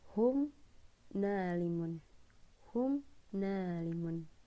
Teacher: izhar syafawi itu berarti mim mati yang memang dibaca jelas gitu ya, tapi bibirnya memang agak-agak ketutup gitu ya